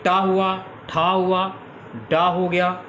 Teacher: ये सभी आपके मूर्धा से बोले जाने वाले उच्चारण हैं